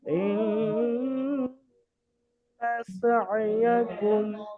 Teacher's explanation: ইন্না গুন্না হবে, নুনে মুসাদ্দাদ, ওয়াজিব গুন্না, কিন্তু নুন জাবার আছে, হারাকাত টান হবে না, নুন টান দেবেন না।